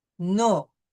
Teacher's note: So nom ends in M, so we will pronounce a nasal O